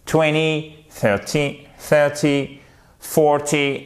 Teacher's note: Et à chaque fois, là, c'est la première syllabe qui est accentuée.